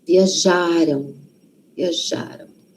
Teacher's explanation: Passado está antes da gente. O passado, então, a sílaba tônica, a sílaba forte, está antes.